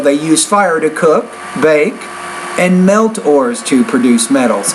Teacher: the tone kind of rises on all the items except the last.